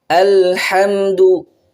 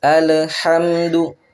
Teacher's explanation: lam dia punya sifat bainiyah, antara tertahan dan antara mengalir.